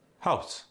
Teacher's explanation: notice the raised vowel in house.